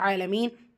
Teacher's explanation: ஐனில் அலிஃப் சொகீரா இருக்குது, 2 ஹரக்கத்தில் நீட்டம் கொடுத்து ஓதணும்